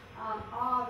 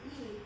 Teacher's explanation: the ah, your mouth is very open, the e, your mouth is quite closed, and the lips are drawn back. So the oral cavity in your mouth is a different shape.